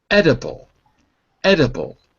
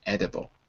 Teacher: the first syllable ends on the d, edible.